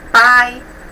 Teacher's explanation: o i é considerado semivogal o que é pronunciado de maneira mais fraca